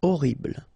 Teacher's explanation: Okay, first letter is H, but then we don't pronounce H, so you don't pronounce it. And the first thing you hear is O.